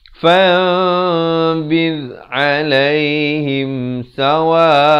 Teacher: di sini hukum bacaannya digantikan daripada bunyi nun kepada bunyi mim. Itulah maksudnya ikhlab, dan jangan lupa panjangkan 2 harakat.